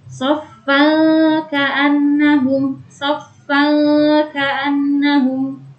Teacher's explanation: Cara membacanya yaitu samar, seperti menambahkan huruf eng. Apabila kita menginjakkan di huruf nun sukun, jadi langsung persiapan ke huruf selanjutnya. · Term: ikhfa hakiki